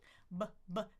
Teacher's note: b, two lips, voicing.